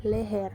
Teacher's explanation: bunyi e Tengah bawah depan tak bundar apabila berada pada silabel tertutup seperti pada kata leher yang kel yaitu eum direalisasikan sebagai bunyi